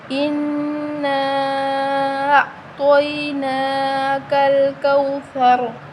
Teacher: کل-کوثر، فا کو نرم پڑھیں گے اور را کو موٹا پڑھیں گے، را کے اوپر زبر ہے تو ہم را کو موٹا پڑھیں گے